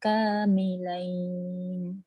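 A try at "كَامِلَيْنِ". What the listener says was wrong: Ya, kamilain. Bawah sikit, jangan milain, atas sikit. Kamilain.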